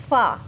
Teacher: ये होंठों के तर हिस्से के साथ हमने इसको टच किया है